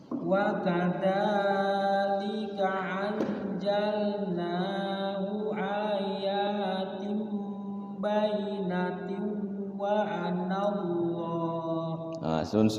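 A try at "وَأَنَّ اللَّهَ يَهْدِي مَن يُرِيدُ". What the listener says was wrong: Nun tasydidnya digunakan, wa an bayyina, nanya panjang, bayyinatin wa anallah.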